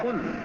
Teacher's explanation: قاف بھی حلق کی طرف سے اندر سے زبان کے درمیانی حصے کے آگے سے ادا ہوگا